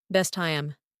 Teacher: The t sound of best drops. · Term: elision, Consonant to consonant elision